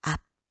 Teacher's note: 어말이나 자음 앞에서는 비읍 소리로 바뀝니다. 앞 이렇게 발음해야 돼요.